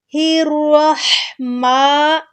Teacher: میم کو تھوڑا سا کھینچیں گے کھڑی زبر کی وجہ سے